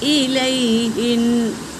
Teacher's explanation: یا ساکن سے پہلے زبر یائلین ہے، اسے جل پڑھیں گے، نرم آواز میں پڑھیں گے